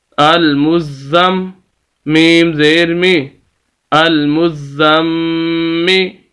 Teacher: یہاں پر جو ہے یہ غنہ بھی ہوگا کہ میم مشدد ہے اور میم مشدد پر ہم غنہ کر رہے ہیں، اور غنہ کہتے ہیں ناک میں آواز لے جانے کو۔